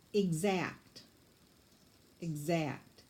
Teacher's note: the X has that K-S sound, so there's no S in the word. The S sound comes from the X.